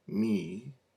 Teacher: M sound, bilabial nasal. You can see the bilabial. You cannot see the nasal.